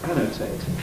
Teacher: And the A, although it's not stressed in the sense that I would say stressed, it's still a strong vowel, not a reduced vowel.